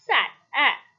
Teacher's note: The lips are neutral. This is a front unrounded vowel just below the half open position. This vowel also occurs initially and medially.